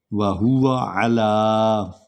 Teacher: بیدہ الملک، وہو علی، عین کو لمبا کریں گے، وہو علی، عین کو حلق سے نکالیں گے